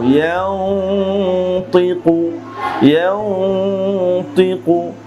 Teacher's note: নুন সাকিনের পর ত, মোটা হরফ এসেছে এখানে, এই জন্য গুন্নাটা মোটা করছি। ইয়ানুন জবর ইয়াং, তজের তি, কফ পেশ কু, ইয়াং তিকু, ইয়াং তিকু।